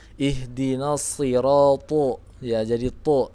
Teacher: Ihdinasi, seperti ihdinasirato. To juga termasuk huruf isti'la, maka sebagian lidahnya itu naik ke langit-langit. Hasilnya jadi ihdinasirato, ya, jadi to, ya, tebal seperti itu.